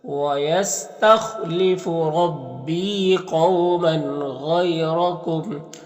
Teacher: واو لین سے نرم آواز کے ساتھ جلد پڑھیں گے · غین حروف مستعلیہ میں سے پر پڑھیں گے، یہاں پر یا لین سے نرم آواز کے ساتھ جلد پڑھیں گے۔ را کو پر زبر، را کو پر پڑھیں گے، اس طرح سے وَيَسْتَخْلِفُ رَبِّي قَوْمًا غَيْرَكُمْ۔